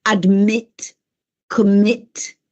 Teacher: sentite che c'è questo accento che cade, questo stress on the second syllable, in quel caso si raddoppia.